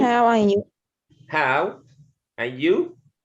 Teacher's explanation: in this sentence the stress is on how and you